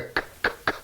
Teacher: made in the back of the throat with the back of the tongue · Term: velars